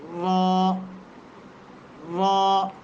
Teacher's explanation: ثنایا اور رباعی کے مسوڑوں سے جا کر کے لگے نا جب زبان کا کنارہ، تو اس وقت لفظ را ادا ہوتا ہے